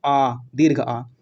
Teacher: उनको उच्चारण करने में आपका मुख जो है वो पूरा पूरा खुल रहा है, तो उन्हें आप क्या बोलेंगे, विवृत स्वर बोलेंगे।